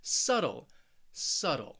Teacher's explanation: subtle also remember i'm from the united states so that t i'm really saying a flap t which almost sounds like a very soft d sound